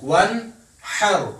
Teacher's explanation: یہ دیکھیں نون ساکن کے بعد حار ہے, ون حر, حار ہے, اس وجہ سے ہم نے ظاہر کر کے پڑھا. نون میں نہ ہم نے اخفا کیا نہ ہم نے غنہ کیا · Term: اظہار